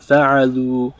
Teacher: we added a dhamma onto the end, onto the last root letter, and then we added a waw sakina. So we elongate the oo sound, fa'alu, and then we add an alif to the end.